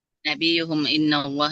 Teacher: Nabi ini mimnya jangan terlalu lama ditahan